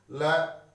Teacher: देखिए उच्चारण करके, ल जीवा ऊपर जा रही है, दांतों को स्पर्श करके ऊपर जा रही है, गोल हो रही है ल, और प्राणवायु दोनों के पास से निकल रही है, जीवा के दोनों ओर से निकल रही है